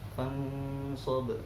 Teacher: di akhirnya ada huruf qalqalah berupa ba, maka namanya qalqalah kubro karena di akhir kalimat